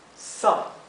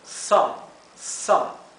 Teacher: la O se pronuncia entre una A y una O